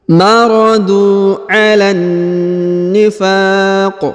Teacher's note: huruf fa dipanjangkan boleh 2, boleh 4, boleh 6 karena di depan huruf fa terdapat alif